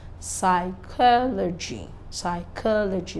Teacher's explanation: This is psychology, not logy. The stress is on the third syllable, counting from behind. and second syllable from the front. · The stress is on the CHO.